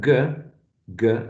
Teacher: a sound produced by raising the back of your tongue and to touch the soft palate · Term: velar sound